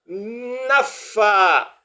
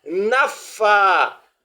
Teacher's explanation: Vous voyez, là encore à cause de la présence de tchadda, on doit avoir l'impression que le F est doublé au cours de la lecture